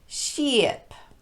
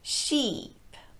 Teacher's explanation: bring the tongue up very high and keep it there sheep if you start high but let the tongue relax right before that next consonant you get sheep instead you want to keep that tongue up high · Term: long e